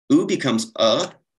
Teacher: u becomes uh, as in the word cup. I guess a schwa, if you will.